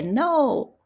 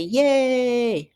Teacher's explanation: when you get really excited, you say, yay. So that sound to us is you're hitting the fourth tone.